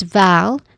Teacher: It is not totally short because the vowel sound is held a little bit longer. It's vow, not v.